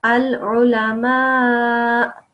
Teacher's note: So this hamza, if you just look at the hamza, it has a dhamma, so that will turn into a sukoon, and because of that, you will say al-ulama, like that. Al-ulama, a slight sound of hamza in the end with a sukoon